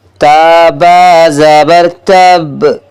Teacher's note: شد والے حرف پر وقف کی صورت میں بھی 2 حروف جتنا وقت لگا کر ادا کریں گے، جیسے تابا زبر تب۔